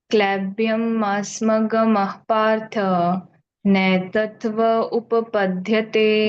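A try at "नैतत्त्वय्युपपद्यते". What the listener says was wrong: नहीं त्वय भूल जाते हो आप नैतत्त्वय उपपद्यते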